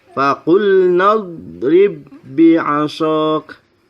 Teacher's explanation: Ada bacaan idgham mutamathilain karena ada ba sukun bertemu dengan ba yang berharokat, maka dibaca ba yang pertama, ba sukunnya masuk ke dalam ba yang kedua yang berharokat